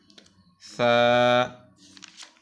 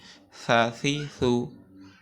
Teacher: জিহ্বার আগা তার বরাবর তার সামনের উপরের দুই দাঁতের আগার সঙ্গে লাগিয়ে আমরা সা উচ্চারণ করি